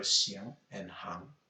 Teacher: The two pronunciations are xiang and hang, both with second tone.